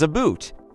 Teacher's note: Canadians often pronounce about as a boot. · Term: Canadian accent